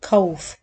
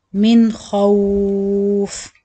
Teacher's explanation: Also the kha, say it kha, not kauf. Ka is like ka sound and the kha is deeper little kha.